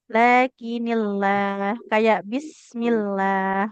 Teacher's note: Lafaz Allah itu lamnya akan tipis kalau huruf sebelumnya kasrah ya. Ya, saya lakinillah kayak bismillah ya.